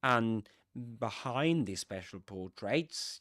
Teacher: you will notice that the accented word there is behind, because these special portraits was mentioned before, right?